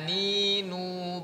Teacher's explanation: ujung lidah bertemu dengan gusi dua gigi seri lebih ke bawah sedikit dari makhrajnya dlam disertai guna atau dengung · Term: nun